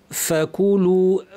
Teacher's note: ফা স্পষ্ট আওয়াজ হবে, প্রচুর আওয়াজ, প্রচুর বাতাস